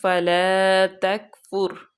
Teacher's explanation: را جو ہے وہ وقف کی وجہ سے پر پڑی جائے گی۔